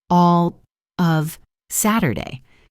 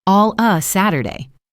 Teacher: The phrase all of is almost always reduced to all so it sounds like all Saturday.